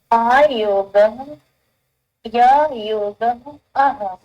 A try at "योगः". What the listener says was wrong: अह न, विसर्गः।